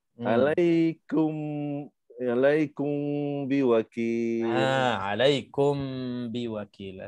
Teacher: Yang kedua, ikhfa syafawi, mim jumpa dengan ba, jadi kita baca ikhfa dengan dengung 2 harakat.